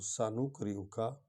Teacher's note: تو سنقرئک، سین سیٹی کی آواز نکلے گی، اور نون اور قاف کو اکٹھے پڑھیں گے۔ قاف حرف حلقی ہے، اس کو حلق سے نکالیں گے